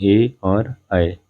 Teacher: ऐसे स्वर जिनका उच्चारण कंठ और तालु की सहायता से, दोनों की सहायता से किया जाता है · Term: कंठ तालव्य स्वर